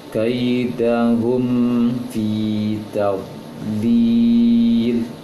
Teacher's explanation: kaidahum fi, ini tidak boleh didengungkan, mim sukun bertemu dengan fa.